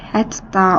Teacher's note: İki t yanaşıdırsa, ikincisi cingiltləşəcək.